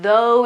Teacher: the TH sound is, well, mild, and then the vowel is more open